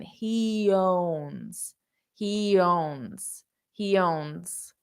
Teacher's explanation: this owns is a little bit of a voiced sound which is why I wrote it as a z as a z because it's voice heon zonza hea he owns